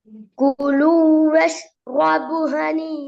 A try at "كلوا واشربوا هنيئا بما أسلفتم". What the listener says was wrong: குலு வஷ்ரபு பாபு நீட்டணும்.